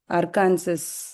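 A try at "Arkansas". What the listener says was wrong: இல்ல, அர்கான்சாஸ்னு சொல்ல மாட்டாங்களே. ஆர்கன்சான்னு கட். அப்பயும் நீங்க பாத்தீங்கன்னாக்கா அந்த ஒரு லெட்டரை வந்து யூஸ் பண்ண மாட்டாங்க.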